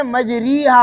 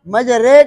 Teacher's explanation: بات سمجھ آ رہی ہے نا؟ یعنی آپ امالہ کر رہے ہیں، پوری یا کے طرف نہیں لے کر جا رہے، یا کے طرف مائل کر رہے ہیں، پوری یا نہیں بنا رہے ہیں۔